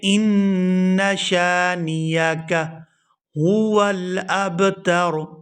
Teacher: یہاں غنہ کریں گے اور اس ان کے ساتھ الف مدہ نہیں ہے تو اس کو کھینچ کے ادا نہیں کرنا۔ بعض لوگ اس کو پڑھتے ہیں ان شانئک، ان نا کو لمبا نہیں کرنا، اور اس کو پڑھیں گے ان شانئک هو الابتر، هو الابتر، اور آخر سے را کو وقف کی وجہ سے ساکن کر دیا جائے گا۔